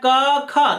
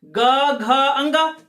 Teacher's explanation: क ख तो अघोष हो गए, ग घ अंगा ये सघोष हो गए